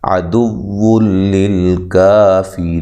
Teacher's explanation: یہاں بھی نون تنوین کا ادغام بلا غنہ ہے اور لام کو ہلانا نہیں ہے، کاف باریک پڑھنا ہے، ری یا مدہ ہے اور را کو باریک پڑھنا ہے، وقف کی صورت میں مد کر سکتے ہیں، للکافرین ایسے لمبا کر سکتے ہیں، مد کر سکتے ہیں، ٹھیک ہے جی۔